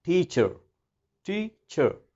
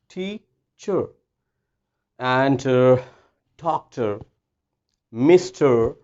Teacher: you don't have to pronounce R whenever R comes after the vowel. अगर वॉयल के बाद R आ जाए तो आपने R को प्रोनाउंस नहीं करना।